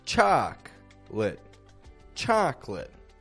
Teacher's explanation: even though this is spelled as a three syllable word most English speakers actually pronounce it as a two syllable word